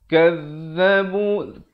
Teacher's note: Yang betulnya za di hujung lidah.